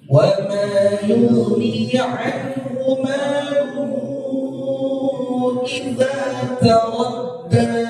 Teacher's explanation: Jadi baca 4 harakat. Jadi baca panjang. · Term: mad jaiz munfasil